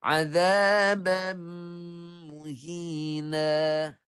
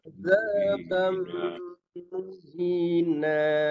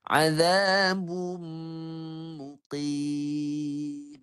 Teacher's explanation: Sempurna tanwin ni masuk ke dalam mim. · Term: masuk secara sempurna